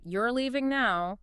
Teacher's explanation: with the voice going down. That's a statement.